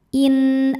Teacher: nun sukun menghadapi huruf halqi atau huruf tenggorokan yaitu Hamzah maka nun sukun dibaca jelas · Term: izhar halqi